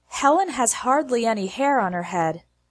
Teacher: the H sound in the word her disappears. On her sounds like honor.